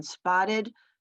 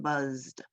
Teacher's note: they sound like id as in spotted t as in mopped or d as in buzzed